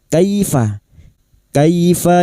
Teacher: Kaifa fathah bertemu ya sukun kita lunakkan huruf lin